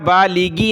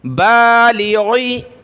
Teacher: غین کو گلے سے نکالا، اس کی جگہ گاف نہیں پڑھنا، بالیگی نہیں، بالیغی، ہا کھڑی زیر ہی، بالیغی ہی، بالیغی، غین ہے، ٹھیک ہے؟